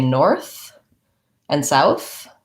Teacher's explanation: when I say north and south, I have the voiceless TH